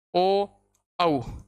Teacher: गोल होता है। कि वे स्वर जिनका उच्चारण करने पर अपने होठों की आकृति गोल हो जाती है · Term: वर्ताकार स्वर